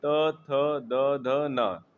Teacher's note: त वर्ग क्या है? त थ द ध न इसका उच्चारण स्थान क्या है? दंत है।